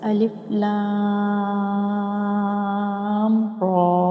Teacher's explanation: را کو 1 الف یا 2 حرکات کی برابر لمبا کر کے پڑھیں گے